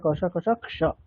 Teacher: ক স এটাকে আস্তে আস্তে করতে করতে স্পিডটা একেবারে এমন লেভেলে বাড়াতে হবে যেখানে ক আর স মিশে যাবে, কিন্তু দুটোর উচ্চারণও শোনা যাবে